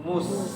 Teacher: Mim dalam keadaan muncung, sin dalam keadaan mulut asal.